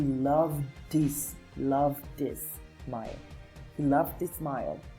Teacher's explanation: And here we say he loved, and then we have his. So we are going to put the D and the his together, and it's going to sound something like he loved this smile.